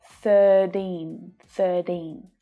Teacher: You may also hear the T in the middle sound a bit more like a D when native speakers say it. 13, 13. This happens a lot in America and Australia, especially when the T is between two vowel sounds.